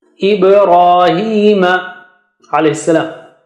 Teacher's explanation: ba has qalqala and ra is thick